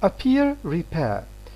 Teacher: In both these words, P is between two vowels, but the next one, the second one, is stressed. In this context, P is going to be aspirated. So this is aspiration here.